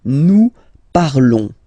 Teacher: Remember, final s is not pronounced